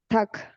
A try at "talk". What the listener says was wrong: Sin la L. Talk.